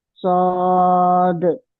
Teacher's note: दाल साकिन है ना, तो दाल का कलकला तो हम करेंगे ना